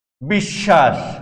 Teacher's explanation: স এখানে বফলার কারণে দুইবার উচ্চারিত হয়েছে। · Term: দ্বিত্ব